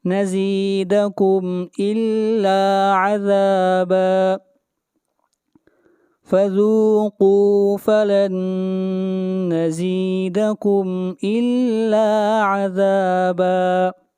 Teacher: نون ساکن کے بعد حروف یرملون میں سے نون ہے، ادغام مع الغنہ ہوگا